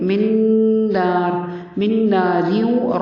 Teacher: وا کی آواز پر ہوگی، میم مشدد ہے، غنہ کرنا ہے. میم کے ساتھ نون کو ملاتے ہوئے غنہ کریں گے